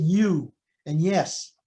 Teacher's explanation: the tongue moves up to the the palatal region and there's some movement there some gliding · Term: palatal approximate